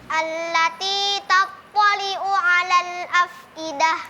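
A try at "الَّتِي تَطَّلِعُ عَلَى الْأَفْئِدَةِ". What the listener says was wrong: Ya, ini ain sama ain. Kenapa yang pertama jadi hamzah, yang kedua jadi ain? Tattali'u'a. Ya, jadi mudah-mudahan diperhatikan huruf dal dengan huruf ainnya.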